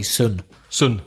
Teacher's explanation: in belfast there is no long they're all short